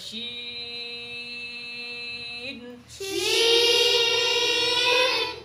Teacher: জিহ্বার মাঝের অংশ এবং উপরে তালুর সাথে মিলে কি উচ্চারণ হয়? শিন উচ্চারণ। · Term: শিনের উচ্চারণ